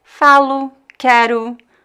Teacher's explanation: So many times the final O, just like the final E, is reduced. So the final O at the end of words, when it's an unstressed position, can be pronounced as a weak U.